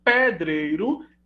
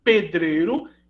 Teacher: se o E pré-tônico, né, eu encontro a realização aberta, pedreiro, e fechada, pedreiro